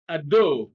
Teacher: adult stress is on the second syllable